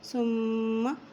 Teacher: میم کے اوپر شد ہے تو یہاں غنہ کرتے ہوئے پڑھیں گے